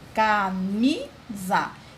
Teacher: Observem que o mi é a sílaba mais forte